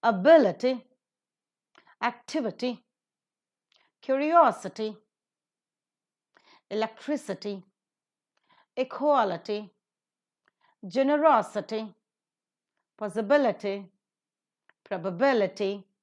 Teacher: All these are the polysyllabic words ending with ITY, and they take up the stress in the antepenultimate syllable.